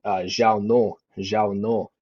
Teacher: sometimes I even hear people drop like the ng at the end, and they even say like Zhao no.